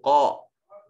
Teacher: قاف یہ صفت استعلاء اور اس کو موٹا کر کے پڑھیں گے